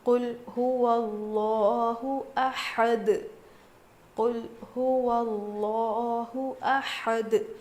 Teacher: لفظ اللہ کے لام سے پہلے زبر آنے کی وجہ سے لفظ اللہ کے لام کو موٹا پڑھیں گے